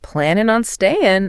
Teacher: dropping the g on both words